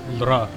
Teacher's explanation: A vocalic L. The tongue touches the teeth ridge holding steady while the sound is forced to escape purely around the sides of the mouth.